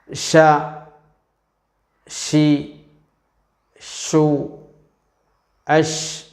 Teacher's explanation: നാവിൻറെ മധ്യം മേലെ അണ്ണാക്കിൽ സ്പർശിച്ചു കൊണ്ടാണ് ഷീൻ ഉച്ചരിക്കേണ്ടത്